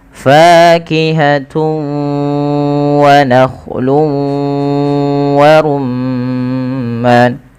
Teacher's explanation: dengan huruf wau maka ini kita namakan dengan bacaan Idgham bighhunah cara membacanya yaitu memasukkan tanwinnya kepada huruf wau karena idgham itu artinya memasukkan bighhunna disertai dengan ghunah maka kita masukkan dulu huruf tanwinnya fakihatun menjadi fakihatu langkah yang